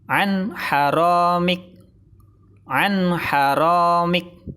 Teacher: Salah, karena bacaan ithar tidak boleh dengung.